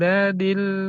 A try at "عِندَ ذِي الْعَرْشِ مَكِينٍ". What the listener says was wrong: Dadil, bukan dadil, dadil. Da belakang gigi, zil gigit. Jadi geser dazi, jangan dadil, dadil, dazil. Ya, inda zil arshi makin.